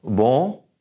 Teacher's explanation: Push it through your nose.